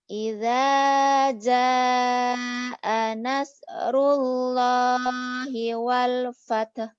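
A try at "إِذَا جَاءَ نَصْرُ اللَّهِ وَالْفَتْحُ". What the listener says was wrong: Nasnya kurang kurang nyut ya. Idza jaa nas. Idza jaa nasrullahi wal fath. Wal fath. Nas. Nas. Soalnya kurang syut. lo-nya panjang. Idza jaa nasrullahi wal. Lo-nya panjang itu.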